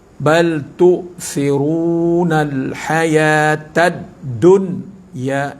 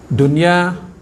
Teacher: di sini dia tak jadi Idam maal gunah dia jadi izhar mutlak